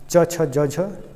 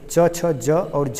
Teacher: हिंदी के स्पर्श संघर्षी व्यंजन है